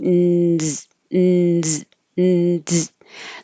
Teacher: So moving from a pressed position like I would start for a D, which is now my in here, I'm making nz, nz, nz. There's a tiny little delay, and that could be heard as a D.